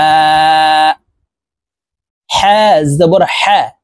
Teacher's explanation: এই হা হালকের মধ্যখান থেকে উচ্চারণ হবে